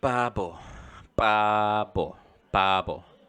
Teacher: Because ba is the first sound of the word, it kind of sounds like a P.